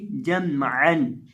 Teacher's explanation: अब यहाँ हम आइन को हलक के दरमियान से अदा करेंगे, इसकी आवाज़ आएगी जमअन।